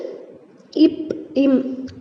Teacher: ஆகிய 2 மெய்களும் மேலிதழும் கீழிதழும் பொருந்துவதால் பிறக்கின்றன